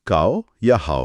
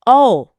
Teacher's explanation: आवाज ओ की तरह गोल होकर होठों से नहीं निकल रही बल्कि मुंह के अंदर से खुलकर आ रही है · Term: वावलियन